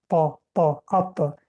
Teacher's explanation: مخرج حرف تا سری زبان ما در پیش کام می رسد.